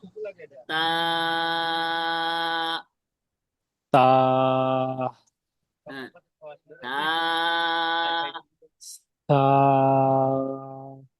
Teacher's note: তাটা একটু নরম ভাবে, হ্যাঁ, জিহ্বার আগার থেকে উচ্চারণ করতে হয়